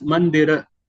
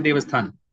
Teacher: practically every word, there is a Schwa deletion in the north